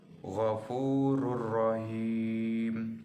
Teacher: dibaca dengan lebur tanpa dengung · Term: idgham bilagunnah